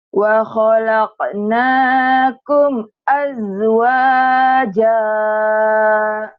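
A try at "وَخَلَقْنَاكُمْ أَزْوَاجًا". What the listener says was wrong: Zanya jangan dikol-kolahkan. Pecah, rapuh. Jangan bukan kol-kolah itu.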